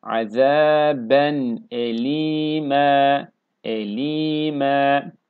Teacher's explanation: Ama bu şekilde metli okuduğumuz yerlerde E ile A arası bir ses veriyoruz. Tam A sesi vermiyoruz. Ma değil, M olacak.